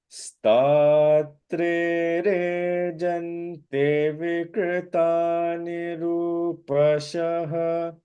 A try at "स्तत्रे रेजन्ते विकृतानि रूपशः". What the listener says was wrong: Okay, Rejante, long vowel, duration. Pay attention to duration and te. स्तत्रे रेजन्ते विकृतानि रूपशः